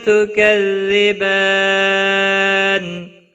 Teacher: با کے اوپر کھڑی زبر ہے، 1 الف کے برابر کھینچ کر پڑھیں گے، اور وقف کی صورت میں نون ساکن پڑھا جائے گا، وقف بالاسکان ہوگا۔ مد العارض وقفی ہوگا، 3 سے 5 الف کے برابر کھینچ کر وقف کریں گے